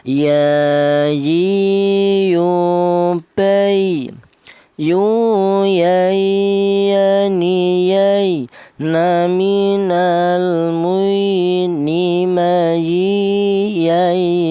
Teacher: Huruf ya ini keluarnya huruf berasal dari tengah lidah